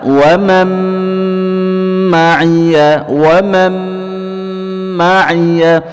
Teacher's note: Ya, idgham birunnah. Jadi tidak langsung dibaca wa man ma'iyah, tapi ditahan dulu dua harakat. Ya, dengan dengung dalam khasyum kita · wa man ada nun sukun bertemu dengan mim, idgham birunnah